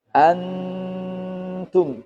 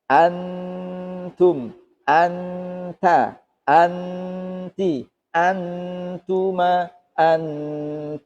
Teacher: Ada nun sukun bertemu ta. Berarti suaranya an. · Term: ikhfa